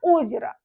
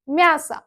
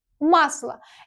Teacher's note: İkinci O isə vurğusuz olduğu üçün o tələffüzdə A səsini verir.